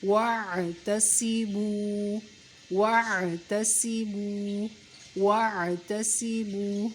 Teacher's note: واو پہ منہ کو گول کر لینا ہے، عین کی آواز حلق سے، تا کو باریک، صاد کو موٹا، اور واو کو تھوڑا سا کھینچ کر پڑھیں گے۔ واو عین زبر وا، تا زبر تا، وَاعْتَ، صاد زیر سی، وَاعْتَصِی، میم واو پیش مو، وَاعْتَصِمُوا، وَاعْتَصِمُوا، وَاعْتَصِمُوا۔